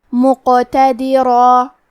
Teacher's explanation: ادائیگی زبان کے جڑ اور تالو کے نرم حصے سے ہے، قاف حروف التفخیم میں سے ہے، تو ہم یہ حرف کو موٹی آواز میں پڑھیں گے ، اور کیونکہ اس پہ جزم ہے تو حرف القاف بھی